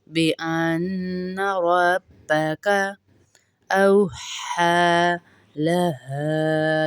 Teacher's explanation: بأن میں غنہ ہوگا، نون مشدد ہے اس لیے